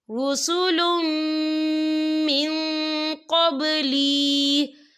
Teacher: قل قد جاءكم رسل من قبلی، یا دیکھیں رسول، لام کے اوپر تنوین ہے، تنوین کے بعد جو ہے میم آ رہا ہے اور میم جو ہے حروف یرملون میں سے ہے تو یہاں پر ادغام ہوگا، تو ہم اسے غنّے کے ساتھ پڑھیں گے۔